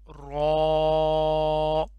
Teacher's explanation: رو، اس کو صحیح سے موٹا کر کے پڑھنا ہے